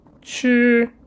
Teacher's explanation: This is called chi, first tone, flat tone, chi, which means to eat.